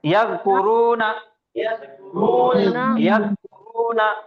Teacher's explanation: پھر را واو پیش, رو, واو ساکن ہے اور اس کے پہلے والے حرف پر پیش آیا, اس وجہ سے یہاں پہ ہو جائے گا قاعدہ واو مدہ کا. تو واو مدہ کو ایک الف کی مقدار کھینچ کے پڑھیں گے